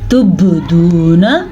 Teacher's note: با کے اوپر کلکلا ہو رہا ہے